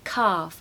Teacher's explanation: make sure to use a long a calf and no l